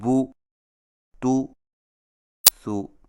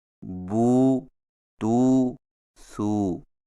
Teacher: سیدھی پیش کو ہونٹوں کو گول کر کے بغیر کھینچے اور جھٹکا دیے پڑھا جاتا ہے، جیسے بو تو سو، اور الٹی پیش کو ہونٹوں کو گول کر کے تھوڑا سا کھینچ کر پڑھا جاتا ہے